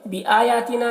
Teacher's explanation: یہاں پر حمزہ اور یا دونوں میں کھڑا زبر ہے جو الف مدہ کی طرح ہے تو اسے ایک الف کے برابر کھینچ کر پڑھیں گے